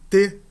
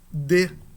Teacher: O T é surdo e o D é sonoro.